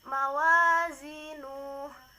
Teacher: bacaan Mad Thobi'i dibaca panjang dua harakat